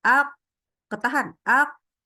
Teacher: yang berdaging nah dia akhirnya udara ter tahan gitu ya jadi ketika kita sedang menyukunkannya dia enggak keluar udara